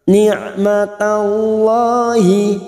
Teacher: Huruf ain yang memiliki sifat tawassut dan jahar jangan samakan dengan hamzah.